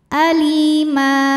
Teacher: karena ada Ya Sukun didahului baris kasrah maka huruf lam panjang dua harakat · Sukun didahului baris kasrah maka huruf lam panjang dua harakat alima jika berhenti di ma hukumnya Mad iwad sebab ada baris tanwin fathah yang kita berhentikan cara bacanya panjang dua harakat